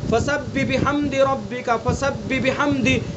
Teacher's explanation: یہاں ہم جب پڑھتے ہیں تو جلدی میں ہاں کو حذف کر جاتے ہیں